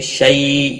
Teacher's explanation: شی یا لین ہے، تھوڑا نرمی کے ساتھ کھینچ کر ادا کریں گے